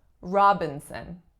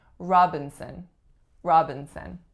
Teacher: the second syllable then it's a syllabic N or schwa n and the third syllable is also a schwa